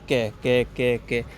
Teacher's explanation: यह क ध्वनि का उच्चारण स्थान कहां से आपके कंठ से